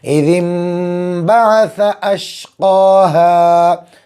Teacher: نون ساکن ہے لیکن اس کی آواز میم سے بدل دیں گے۔ اذ انبعث اشقاہا، بڑا شین، بڑا قاف، چھوٹا ہاتھ صاف نکالیں گے۔ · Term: اقلاب